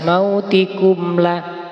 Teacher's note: Nah, ini mim sukun ketemu lam izhar izhar syafawi. Maka dibaca jelas mautikumlah. Enggak boleh bacanya mendengung.